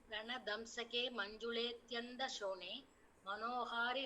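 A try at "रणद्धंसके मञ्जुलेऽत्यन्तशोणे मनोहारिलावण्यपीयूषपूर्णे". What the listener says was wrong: Super.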